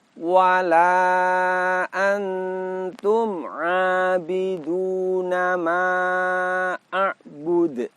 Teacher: Nun sukun dibaca dengan cara disamarkan dan didengungkan. Kemudian pada bagian akhir kita dapati kolkolah. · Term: ikhfa hakiki